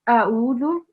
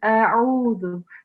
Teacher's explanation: the alif and ayn sound should be separate. So not a'udhu, it's a'udhu.